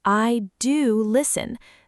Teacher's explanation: The emphasis lives in do.